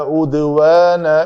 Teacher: عدوان دال کے اوپر کلکلا کریں گے